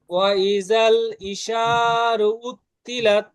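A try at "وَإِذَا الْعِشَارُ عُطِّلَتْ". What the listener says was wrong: হ্যাঁ সুন্দর ওয়া ইজাল এর জালটাকে একটু নরম করতে হবে ওয়া ইজাল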